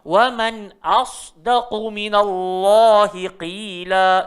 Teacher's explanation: Yang tebal sebenarnya sod sahaja. So bunyi dia mesti jadi as. So jangan bunyi os.